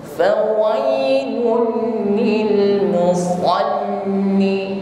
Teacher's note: Sifatnya isti'la, irtifa'u aqsal lisan ila al-hanakil a'la. Jadi ketika mengucapkan shad diiringi dengan pangkal lidah yang naik. Ini yang membuat suara kita berkumpul di atap langit-langit mulut, sehingga bunyi atau suara yang keluar ini berat dan tebal. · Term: huruf shad